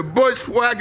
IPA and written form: ˈbʊʃwak (Bushwhack)